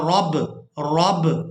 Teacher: रा को बा साकिन के साथ मिलाएंगे तो आवाज़ में हरकत पैदा होगी, इसको कहते हैं कलकला।